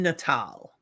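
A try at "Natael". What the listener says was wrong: Tail. It's an AEL. AL would be Natal.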